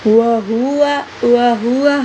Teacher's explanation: ہا کو اس سینے کی جو جانب حلق کا حصہ اس سے ادا کریں گے